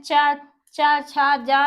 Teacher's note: जो हमारी जीभ होती है वो तालु को टच करती है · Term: तालब